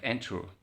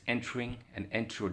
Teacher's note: The stress is on the first syllable, not the second one.